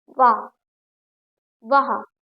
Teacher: वाह वाह दांत और ओठ का प्रयोग कर रहे हैं ना? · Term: दंत ओष्